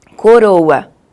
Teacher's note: nós temos aquele R, o som do R, que é um vibrante simples, que é o rã, que a gente chama de TEP, que você fala assim, coroa.